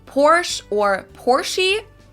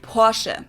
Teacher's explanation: In German, we say Porsche. So there's like this short E sound in the end.